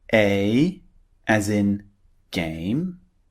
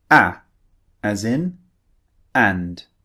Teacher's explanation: A is the first sound. It's quite long. A. And the second sound, a, is very, very short. It comes out in a very short burst.